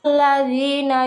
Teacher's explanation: Pada kata alladzina terdapat hukum bacaan mad asli, cara bacanya dipanjangkan 2 harokat